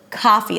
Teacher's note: the first syllable is longer than the second one